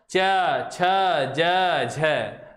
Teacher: स्पर्श तो होगा लेकिन साथ ही साथ संघर्ष भी करना पड़ता है · ये जो मांसपेशियाँ है किसकी, मसल्स जो हमारी सारी चेहरे की, उसमें क्या होता है, खिंचाव होता है। च छ ज झ, बिल्कुल स्पर्श हो रहा है लेकिन संघर्ष भी हो रहा है साथ साथ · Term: स्पृष्ट संघर्षी व्यंजन